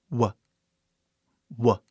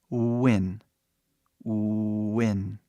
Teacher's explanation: Praticamente, ele é um U que abre para um A, né? Mas é super rápido, né?